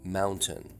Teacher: pronunciation with the glottal stop followed immediately by a nasal Mountain they hypercorrect it to a t- sound rather than a glottal stop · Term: hyper correct T